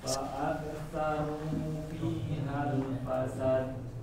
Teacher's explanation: Ru-nya kurang panjang, da-nya jangan panjang.